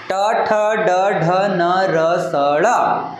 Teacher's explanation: लक्षात तर जेव्हा हे जे उच्चारण आहे हे जे वर्ण आहेत यांचा उच्चारण करतानी आपली जीभ आहे या मूर्ध्याला स्पर्श करते म्हणून यांना या सगळ्या वर्णांना मूर्धन्य वर्ण